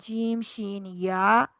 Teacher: जुबान के दरमियान से अदा होने वाले हरूफ हैं जीम, शीन, या